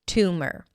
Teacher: Two, like the number 2, and mer. An M sound that shifts directly to the R.